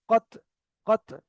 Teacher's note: এই তোয়াটা উচ্চারিত হয় জিভের আগা আর দাঁতের গোড়া, উপরের দাঁতের গোড়া।